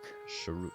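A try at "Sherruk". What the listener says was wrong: Sounds like you're really skipping over that extra syllable there, so it sounds like you're just saying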